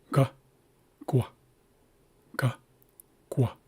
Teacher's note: I'm rounding my lips, my lips before I even make the gu sound. So, that's why it's a small raised W. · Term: rounded